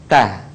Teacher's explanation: Atau sederhananya ujung lidah disentuhkan dengan gusi-gusi seri atas.